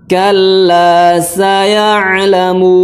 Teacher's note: sin dibacanya dengan sedikit saja suara sofirnya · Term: huruf sin